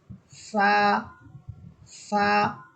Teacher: জিহ্বার আগা সামনের উপরের দুই দাঁতের আগার সাথে লাগবে · এই সা হরফটাকে আমাদেরকে তুলনামূলক নরম করে পড়তে হবে, বা এবং তায়ের মতো শক্ত করে না, বরং নরম করে।